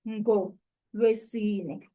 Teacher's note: We've blended together the A of nga and the U of ulwesine. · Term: blending of vowels